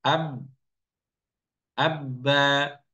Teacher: kita akan mendapatkan suara ba keluar dari kedua bibir maksudnya bibir atas dan bawah AB Abba seperti itu kemudian bacalah Anna dan atau an kita